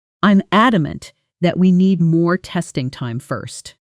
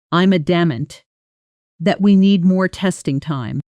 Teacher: The voice rises slightly on adamant almost like a small emphasis peak then settles down through the rest of the sentence. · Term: rise and fall